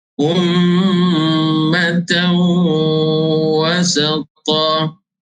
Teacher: Ummatan wasata, tanwin berjumpa dengan huruf waw, idgham ma'al gunnah, dengung 2 harakat.